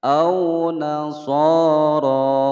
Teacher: Au nasoro so panjang dua ketukan, ro dibaca panjang dua ketukan. Ro-nya dibaca dengan tebal karena ro berharokat fathah, ro tafkhim